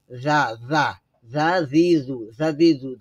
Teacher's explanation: জাল জিহ্বার আগা উপরের দাঁতের আগা থেকে জাল উচ্চারণ হবে এবং পাতলা আওয়াজ আসবে, নরম